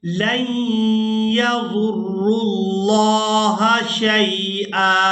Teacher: अब यहाँ पर हम लाम को या मुशद्दद के साथ मिलाते हुए गुन्ना के साथ अदा करेंगे और इसके बाद रॉ को लफ्ज़ अल्लाह के लाम के साथ मिलाएंगे। यहाँ पर जो वाव है ये वाव साइलेंट ही रहेगी, इसको अदा नहीं करेंगे।